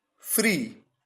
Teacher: यहां पर दो वॉवल्स ई, दो बार ई का यूज हुआ, लेकिन केवल एक वॉवल साउंड जनरेट हो रहा है और वो है बड़ी ई का ई